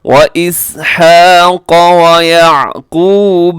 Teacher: قاف موٹا رکھیے گا، قاف کو باریک نہ کیجیے گا۔